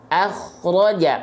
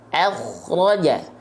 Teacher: Ketika huruf kho sukun didahului oleh huruf berharokat fathah, maka dibaca tebal. Akhraja, pangkal lidahnya diangkat.